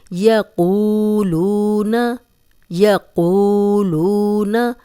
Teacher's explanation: دونوں واو مدہ ہیں اور سیم مقدار میں ہم انہیں لمبا کریں گے اور قوف کو موٹا بھی پڑھیں گے